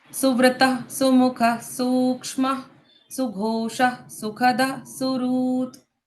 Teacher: इसमें विसर्ग का उच्चारण मैंने ह के जैसे किया